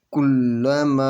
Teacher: الف کے اوپر مد ہے، تو اس مد کو 2 یا 4 حرکت کے برابر کھینچ کر پڑھیں گے